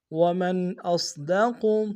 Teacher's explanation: صاد کو موٹا ادا کریں گے، قاف کو موٹا ادا کریں گے